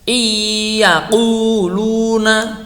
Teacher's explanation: gunahnya itu kita tahan kira-kira 2 harokat